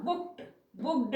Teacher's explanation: ड भी नहीं आएगा क्योंकि ड कब आता है, वॉइस्ड कॉन्सोनेंट्स के अनुसार। ये क क्या है, वॉइसलेस कॉन्सोनेंट है, हार्श, हार्श साउंड निकलता है जिसका कंठ से वाइब्रेशन नहीं होता है। तो इसका जो पास्ट टेंस मेकर होता है ईडी, उसको हम साउंड के अनुसार क्या बोलते हैं, बुक्ड, है ना।